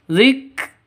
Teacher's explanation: huruf Hames harus ada desis atau nafas yang keluar